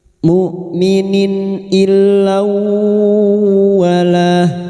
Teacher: kasr tanwin bertemu hamzah idahar halq kasr tanwin dibaca jelas tanpa mendengung · Kasrah tanwin bertemu hamzah idhar halki. Kasrah tanwin dibaca jelas tanpa mendengung. Nun sukun atau tanwin yang bertemu dengan salah satu dari huruf 6 ini termasuk huruf hamzah, maka bunyi kasrah tanwin dibaca jelas tanpa mendengung.